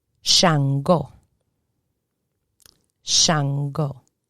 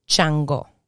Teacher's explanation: so the sh turns into a cha